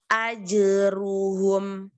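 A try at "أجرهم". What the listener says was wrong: Bukan ru, tapi ro. Tapi tadi kata junah, ajrohum, maroji'ukum, ini jimnya masih kurang kontrol, masih kelewat hams.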